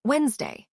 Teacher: Almost nobody pronounces that middle d